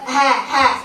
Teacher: Jangan dialihkan ke tenggorokan tengah. Ha. Tenggorokan dalam, paling dalam.